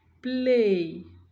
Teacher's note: Now we have play, l, occurring with p. In the environment of play, l becomes devoiced because it is occurring with a voiceless p.